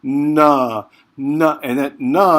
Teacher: you're taking your tongue and you're sticking it up on the roof of your mouth just behind your front teeth